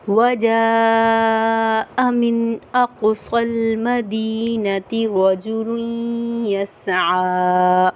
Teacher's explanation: وجاء بڑی مد ہے تو ہم 5 الف کی مقدار کھینچ کے پڑھیں گے